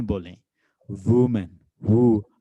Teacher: लेकिन जब आप वो वुमेन वाला जो डब्ल्यू वाला साउंड है वो प्रोड्यूस करोगे तो आपके दोनों लिप्स थोड़े से आगे की तरफ आएंगे।